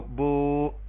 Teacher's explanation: واو ساکن سے پہلے پیش، اس کو واو مدہ کہیں گے اور اس کو ایک الف کے برابر لمبا کریں گے، با پیش واو بو، اور اس کی جگہ پہ کھڑی زبر بھی اپنا الٹا پیش بھی استعمال کر سکتے ہیں، با الٹا پیش بو۔